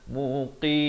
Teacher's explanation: Ujung tutup mulut rapat. Jangan muqin, bunyi macam nun. Mestilah muqim. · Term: mim